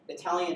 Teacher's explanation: Italian is a mandatory aspirated T.